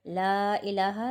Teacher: لا الہ، لا کے اوپر مد متصل ہے، مد متصل کو 3 الف کی مقدار کھینچیں گے